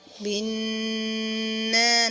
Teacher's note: نون میں شدت کی وجہ سے غنہ ہوگا